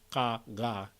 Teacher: you can get things further back, uvular, like ka, ga